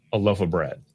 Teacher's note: We might just use the reduced vowel, our old friend schwa, instead of clearly saying the word of.